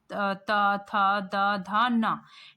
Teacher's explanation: हमारा जो जीभ होता है वो दांत के पीछे वाले साइड को टच करता है, ठीक है? तो इसीलिए इसका उच्चारण स्थान क्या हो गया?